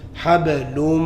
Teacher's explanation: My mouth's closed. There's no air coming from my mouth. Everything's coming through my nose. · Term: ghunna